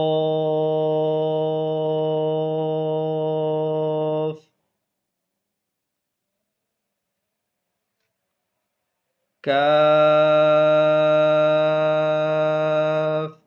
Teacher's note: اس کو لمبا تو کرنا ہے لیکن باریک پڑھنا ہے